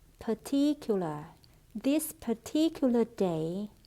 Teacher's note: trọng âm rơi vào âm tiết thứ hai